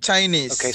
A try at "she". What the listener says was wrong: so not C, but she, sh, Okay, so we have sh and ch in English. Right, so sh is sh, and ch is ch. Sh and ch.